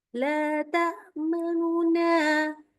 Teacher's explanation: Jadi nun-nya benar-benar kita kecilin dan lebih cepat gitu ya.